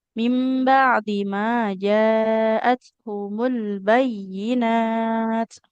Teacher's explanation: ain sukunnya Ibu harus mengalir.